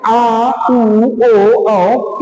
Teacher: जीभ का पिछला भाग ऊपर उठता है ऊपर उठने के कारण ही आ उ ओ औ की उत्पत्ति